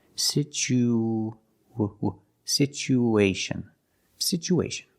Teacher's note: After the oo, situ, we need to link the oo with the A. So we have an extra sound. It's like a w sound, like a W, to link these two vowels. Situation. Situation.